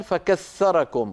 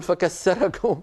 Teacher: في بلاد الشام وما ماثلها يبدلون الثاء سينا، مثلا في قوله تعالى: واذكروا إذ كنتم قليلا فكثركم.